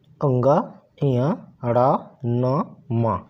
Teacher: इसको बोलते समय हमारे नाक से देखिए भन भना हट की आवाज आती है इसलिए इसको हम नासिक के व्यंजन भी कहते हैं तो ये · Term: नासिक व्यंजन